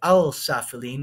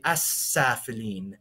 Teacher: you wouldn't say Al safiline when you say asaphylene um so the L Sound disappears and the S sound from the scene becomes more pronounced · the definite article al, sometimes the l sound in it, becomes assimilated to the letter that comes right above it or right after it. So you wouldn't say al-safilin, but you say as-safilin.